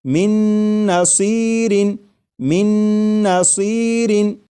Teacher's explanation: میم کے بعد نون مشدد جو ہے اس کی آواز آئے گی اور غنہ کے ساتھ پڑھیں گے۔ جیسے من نصیر۔